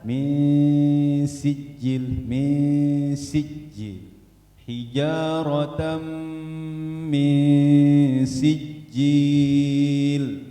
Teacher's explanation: Jangan diangkat, jangan mil sijil, jangan diangkat gitu. Dia datar.